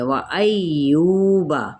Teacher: वाव होंठों की ना तमाम गोलाई के साथ